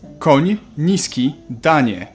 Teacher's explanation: You start with an N and soften it to ni.